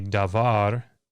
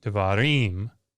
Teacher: when you put the ending on the accent pulls toward the end it shifts